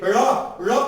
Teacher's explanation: उत्क्षेपित, ऊपर जाके धड़ाम जैसे गिर जाना, इसी को तो कहते हैं उत्क्षेपित। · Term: उत्क्षेपित व्यंजन